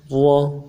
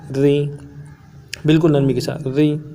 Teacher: زیر کے ساتھ اس کو باریک پڑھیں گے، را زیر ری۔